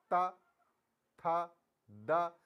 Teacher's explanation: जो जीवा है हमारी त, थ, द, वो दांतों की तरफ जाती है। तो इसलिए इसको हम दंत में ही कहते हैं।